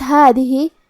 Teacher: کلمت ہادہ، یہاں حرف الدال ہے اور دال کی ادائیگی زبان کے سر اور اوپر والے دانتوں کے اندرونی کناروں سے ہے، آخری میں ہا کے نیچے کھڑی زیر ہے تو یہاں مد صلہ صغرا ہوا، ہم اپنی آواز 2 مد کے برابر لمبی کریں گے، ہادہ تذکرہ۔